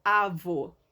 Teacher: são aquelas palavras em que a sílaba mais forte delas é a última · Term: oxítonas